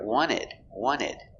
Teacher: when you have nt between vowels the t is silent we don't pronounce the t